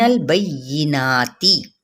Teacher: تی کی تا کی زیر کو ہم لمبا نہیں کریں گے